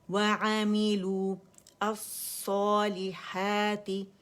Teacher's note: اور جب ملا کے پڑھیں گے تو لام ڈائریکٹ صاد سے ملے گا، واو ڈراپ ہو جائے گا کیونکہ اجتماع ساکنین ہو رہا ہے، دو ساکن اکٹھے ہو گئے،